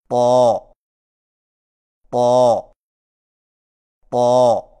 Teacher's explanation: طا کی ادائیگی میں زبان کی نوک کو ثنایا علیہ کی جڑ سے لگا کر اور زبان کے پچھلے حصے کو تالو کی طرف بلند کرتے ہوئے موٹی آواز میں پڑھیں